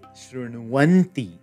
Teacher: The wa kara comes from the internal sandhi, the u plus a.